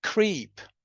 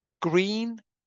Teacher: So the r in creep is voiceless, but the r in green is voiced. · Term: devoicing